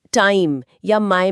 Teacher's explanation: टाइम या माय में आए की ध्वनि। यह आ से शुरू होती है और इ पर जाके खत्म होती है। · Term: दो ध्वनियों की यात्रा, डिप्थॉन्ग्स